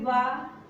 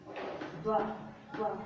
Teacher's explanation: वो दंत और ओष्ठ, ऊपर का दांत निचला होंठ